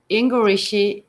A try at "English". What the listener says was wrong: you're adding an E at the end of English.